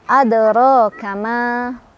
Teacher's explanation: Kalau kita berhenti di ma, ma-nya tetap kita baca panjang 2 harokat. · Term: mad tabi'i